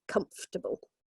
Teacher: the second syllable is completely missed out